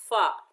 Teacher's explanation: ऊपर वाले दांतों के किनारे जब नीचे वाले होंठ के शकम में लगेंगे, यानी तरी वाले हिस्से में लगेंगे, तो फ़ा अदा होगा। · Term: फ़ा का मखरज